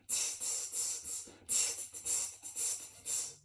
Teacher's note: The second sound is called the hi-hat sound, and to make this sound you want to make the sound like a TS. So using your tongue on the back of your teeth